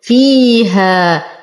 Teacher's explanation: نتم كسرة الفاء، لدينا يا ساكنة ما قبلها مكسور فهو مد طبيعي أيضا